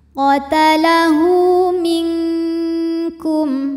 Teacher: cara baca H damirnya ini adalah dipanjangkan dua harakat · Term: Mad Silah qasirah